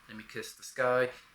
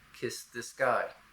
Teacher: There's a voicing difference here, but it's going to be hard to hear after the unvoiced S, and especially hard to hear in kind of a loud rock song the way it's sung like this.